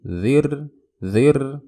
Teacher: ada ro sukun sebelumnya kasroh nah ini rohnya dibaca tipis